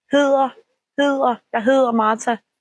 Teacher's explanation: It's like an L, but instead of when we say L, tongue goes up. Here, tongue goes down behind the teeth. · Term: soft D